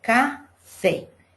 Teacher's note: Fé é a sílaba que a gente pronuncia com mais força e também tem acento. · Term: sílaba tônica